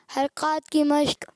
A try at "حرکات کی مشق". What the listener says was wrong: اچھا, یہ حرکات ہے یا حرکات ہے؟ حرکات, کاف باری رکھیں. ابھی بھی کاف تھوڑا موٹا محسوس ہو رہا ہے, دوبارہ.